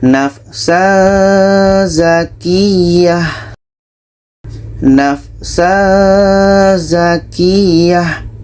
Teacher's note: Ketika sebut huruf tanwin, kita sudah merasakan huruf za. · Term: ikhfa hakiki